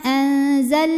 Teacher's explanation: Lam sukunnya lam mutlak, kita bunyikan dengan jelas, tidak ditahan